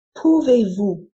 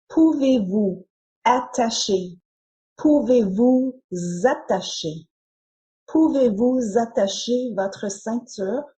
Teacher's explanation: in, Attacher. the S is pronounced as Z to link the two words together. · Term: Liaison